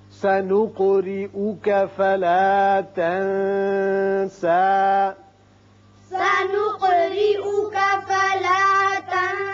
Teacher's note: قاف ساکن ہے، اس کی صفت قلقلہ ادا کریں، را کے نیچے زیر اس کو باریک پڑھیں گے۔